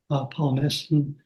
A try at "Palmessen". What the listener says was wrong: I think the accent is on the first syllable, Palmessen.